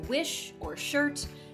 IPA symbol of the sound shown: ʃ